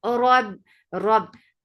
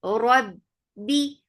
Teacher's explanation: Ba will get sifa of shidda. No flow of sound at all.